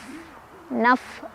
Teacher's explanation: bibir bawah bagian dalam ketemu ujung gigi ya